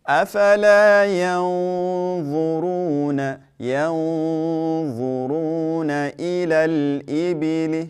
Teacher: The noon here, due to the fact that there's a dha after it, we're going to make the ghunna heavy.